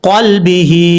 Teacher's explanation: قاف یہ حروف مستعلیہ میں سے پر پڑھا جائے گا ، اور لام میں قلقلہ نہیں کرنا، لام ساکن ہے، قلبی،